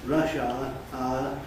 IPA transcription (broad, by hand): ˋrʌʃ aə